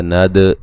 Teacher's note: ند دال پہ قلقلہ کریں گے.